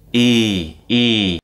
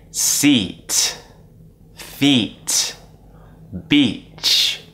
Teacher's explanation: sound what happens is so once again for the e sound the tongue goes High We stretch our lips out and we create more of a smile don't be afraid to smile when it comes up in words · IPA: /i:/